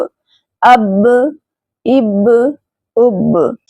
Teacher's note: یہاں با پر قلقلہ کریں گے کیونکہ با حروف قلقلہ میں سے ہے اور ساکن صورت میں اس پر قلقلہ کریں گے۔